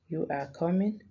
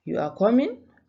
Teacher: end with a fall in pitch on the last word this is a statement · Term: intonation